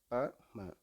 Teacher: ப ம மேலு உதடும் கீழு உதடும் பொருந்துவதால் தோன்றுகின்றது.